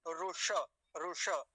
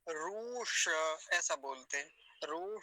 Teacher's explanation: छोटा उ है हस्व उकार है तो जल्दी ही बोला जाएगा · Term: ह्रस्व उकार